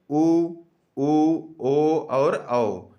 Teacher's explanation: जिनको बोलने में हमारे होठों का आकार क्या हो जाता है? गोल हो जाता है, उन्हें वृत्ताकार स्वर कहा जाता है।